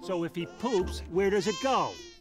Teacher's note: he links the word where to does, resulting in a more soft D sound, commonly heard in American English